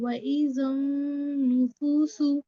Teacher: نون پہ تشدید ہے تو اس کو 2 بار سختی کے ساتھ ادا کریں گے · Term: شمسی کا قاعدہ